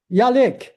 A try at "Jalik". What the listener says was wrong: it is a J, just probably like your pronunciation of it, that's all. Yeah, Jalik.